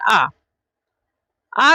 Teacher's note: आ को हम बोल रहे हैं, तो इसमें हमारे कंठ से आवाज निकल रही है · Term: कंठ वर्ण